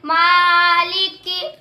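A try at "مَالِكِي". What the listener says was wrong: नाक में ना पढ़ो माँ।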